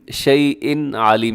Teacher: یہاں تنوین کے بعد عین حروف حلقی میں سے ہے تو یہاں پر اظہار حلقی ہوگا، یعنی آپ نے اس کو تیزی سے پڑھ دینا ہے، یہاں غنہ نہیں کرنا۔